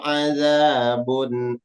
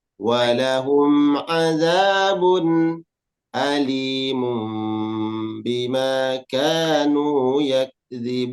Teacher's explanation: Hamzah jangan dibaca ain